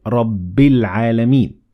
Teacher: we ignored the following hamzet wassel because we kept on reading